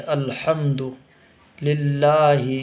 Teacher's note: الحمد میں ایک تو چھوٹا ہا نکالتے ہیں، وہ حلق سے نکالنا ضروری ہوتا ہے